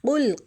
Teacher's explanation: قاف کو ہم موٹا پکڑیں گے اور لام ساکن پر ہم کلکلہ نہیں ہونے دیں گے، کیونکہ لام ساکن حروف کلکلہ میں نہیں ہے۔